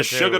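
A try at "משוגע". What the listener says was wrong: It's Meshuggah. Yeah, it's not really ER. You don't pronounce the ER. It's Meshuggah.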